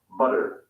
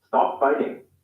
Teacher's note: in the u.s they sometimes sound like an alveolar tap